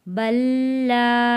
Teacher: جزم والا لام نہیں پڑھا جائے گا، تشدید والا لام پڑھا جائے گا